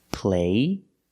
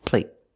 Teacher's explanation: And when you have a T at the end, a stop T, it makes the vowel shorter.